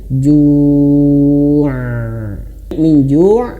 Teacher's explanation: huruf ain itu dia mengalir sedikit. Makanya ketika ju' itu jangan sampai seperti hamzah ju', bukan, harus mengalir ju' min ju' kalau berhenti ainnya dialirkan.